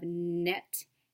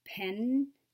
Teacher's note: the tongue behind the teeth the sound as in the beginning of net and the end of pen